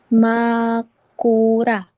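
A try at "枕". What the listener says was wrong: Betul, Makura.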